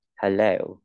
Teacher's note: Ví dụ là từ hello thì mình sẽ đọc là hơ, đọc rất bé